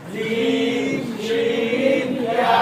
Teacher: জিহ্বার মধ্যকার তার বরাবর উপরে তালুর সঙ্গে লাগিয়ে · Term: 6 নম্বর মাত্রা